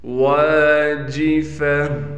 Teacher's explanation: ذال کو واو سے ملائیں گے غنہ کے ساتھ، واو کے بعد الف ہونے کی وجہ سے واو کو ایک الف کی مقدار کھینچیں گے۔